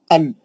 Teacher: नून पढ़ने के वास्ते आपकी जुबान की नोक ऊपर के मसड़ों को टच करती वो नून का मखरज है अन आप वही जबान को पकड़ लीजिए आपको मालूम होगा नून